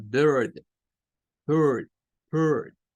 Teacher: parece schwa, pero no es el schwa, es la combinación esta que se suele dar entre la ER o IR en palabras